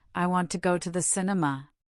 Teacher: The little words like to and the become weak and fast. We almost swallow them. In fact, to and the often become just a quick ta and the sound. · The words want, go, and cin- in cinema are stressed. They are the content words, the verbs, nouns, adjectives, and adverbs that carry the core meaning. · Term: natural sentence stress